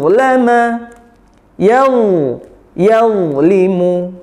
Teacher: Sekarang huruf dha, ingat huruf dha berikan sifat isti'la'nya, angkat pangkal lidahnya dan tebalkan.